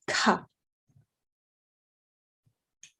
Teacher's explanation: ka with a big puff of air, similar to the cha sound. So you should feel that puff of air on your hand, ka.